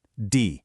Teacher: The tone here is the complete opposite. It's the fourth tone, the falling tone. It's sharp, decisive.